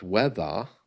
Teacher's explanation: Because you'll notice when I say the word weather, the R at the end is silent.